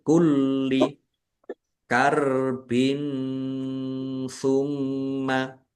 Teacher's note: Kasrh tanwin bertemu dengan huruf tsa. Bacaan ikhfa dibaca samar-samar. Mim tasdid dibaca ghunah atau mendengung.